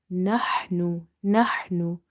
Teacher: Ha is from the middle of the throat.